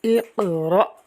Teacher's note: اقرأ، اس لفظ کے اندر قاف حروف قلقلہ میں سے ہے، ساکن ہے، خوب قلقلہ کریں گے۔ آگے حمزہ ساکنہ ہے تو اس کو جھٹکا دیں گے